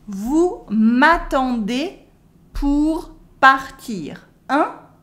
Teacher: And as usual, because it's a question, the voice goes up.